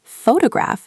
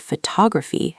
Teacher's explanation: photograph has stress on the first syllable, but photography has stress on the second syllable. So the stress pattern changes even for related words. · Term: word stress